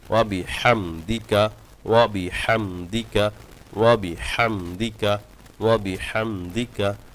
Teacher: অনেকে বিহামদিকা মিমে গুন্না করেন কিন্তু মিমে কিন্তু গুন্না নাই এখানে গুনাহ ছাড়া পড়তে হবে ওয়াবিহামদিকা ওয়াবিহামদিকা ওয়াবিহামদিকা ওয়াবিহামদিকা যখন এটা